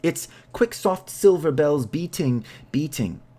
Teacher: In Shapiro's line, the assonance of the short I effectively duplicates the ring of the bell that an ambulance of the 1940s, see publication date, would make.